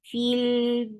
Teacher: this long vowel is not anymore long because it is being attached with the coming up letter